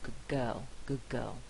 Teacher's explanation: the velar sound is having a backwards effect on the preceding consonant